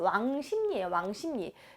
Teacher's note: 비읍과 리을이 만나면은 둘 다 상호동화를 일으켜서 지금 비음으로 진행이 돼요. 그래서 비읍이 미음이 되고 그다음 리을이 니은이 되고 있습니다. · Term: 비음화